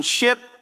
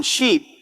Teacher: The difference between the short I sound in ship and the long E sound in sheep, which in English changes the meaning completely, but in many other languages sounds almost identical.